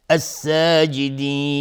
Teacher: الساجدین، الف لام شمسی. الساجدین مد عارض سکون به مقدار 2 یا 4 یا 6 حرکت میتونیم مد بدیم